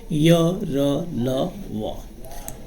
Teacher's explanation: बिल्कुल इनके उच्चारण में स्वर और व्यंजन के उच्चारण जैसे होता है, उस उच्चारण में मध्य की स्थिति अपनाई जाती है। इनके उच्चारण के समय जीभ मुख के किसी भाग को पूरी तरह स्पर्श नहीं करती है, इसलिए इनको अंतस्थ व्यंजन कहा जाता है और इनकी संख्या 4 होती है।